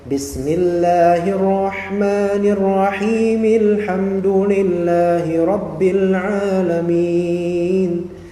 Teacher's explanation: Him itu harus dua harakat saja, tidak boleh menambah menjadi empat. Kenapa? Karena dia menjadi mad asli, menjadi mad thabi'i.